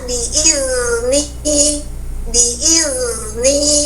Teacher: huruf dalal akan terdengar panjang bunyinya ketika dia Sakinah